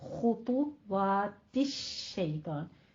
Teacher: खौ भी पुर है, हुरूफ मुस्तालिया में से है, तो अभी दोनों के होंठ गोल करके आपने पढ़ना है